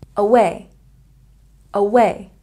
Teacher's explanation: a stress on the second syllable